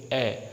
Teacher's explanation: हमारा जीभ का बीच का हिस्सा थोड़ा सा उठेगा और वापस वहीं पर बैठ जाएगा, जिसे हम कहते हैं मध्य स्वर।